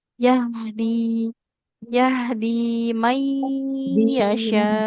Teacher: H-nya mengalir dulu sempurna.